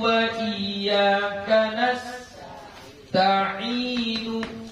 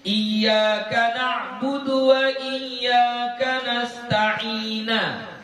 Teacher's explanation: Seharusnya nunnya baris dhammah, tapi dia baca dengan baris fathah.